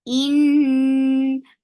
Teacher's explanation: So keep the sound in your nose for a longer time.